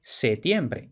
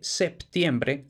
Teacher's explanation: septiembre Y todavía mucha gente dice septiembre es totalmente correcto pero mucha otra gente dice septiembre recuperando el grupo consonántico del latín